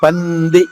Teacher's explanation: నాలుక పళ్ళ పైన టచ్ అవుతుంది, పంది. నాలుక పళ్ళ పైన టచ్ అవుతుంది, పంది.